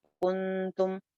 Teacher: اخفا ہو جاتا ہے. یہاں پہ ہم نون کی آواز کو چھپا کے پڑھیں گے. کنتم لیکن باریک رکھیں گے، اس کو موٹا نہیں کر رہی میں.